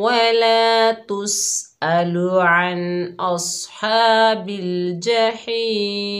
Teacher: तो यहाँ पर हमने वफ़ किया, वफ़ की हालत में मीम की ज़ेर ख़त्म हो गई, मीम साकिन हो गया और वफ़ क्या हुआ, वफ़ बिल अस्कान।